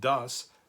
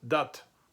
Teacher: very common in many northern German dialects, this word das would be pronounced dat